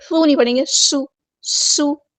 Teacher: سین کی سیٹی ہم واضح کریں گے